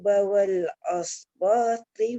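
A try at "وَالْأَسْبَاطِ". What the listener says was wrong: Wal as jangan aus di sin.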